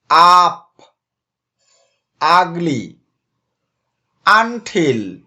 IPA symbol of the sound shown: ʌ